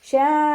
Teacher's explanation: ഷാ മദ്ദക്ഷരവും ഹംസയും ഒരേ വേർഡിലാണ് വന്നിട്ടുള്ളത്. മദ് വാജിബ് മുത്തസിൽ 4 5 കൗണ്ട് നിർബന്ധമായിട്ടും നീട്ടിക്കൊടുക്കുക